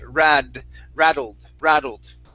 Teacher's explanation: Let's try a flap T sound. So with that double T, it's going to be rattled.